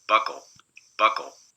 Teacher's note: by lots and lots of aspiration that's before a stressed vowel before a stressless vowel you still get the nice sharp bursts but there's no aspiration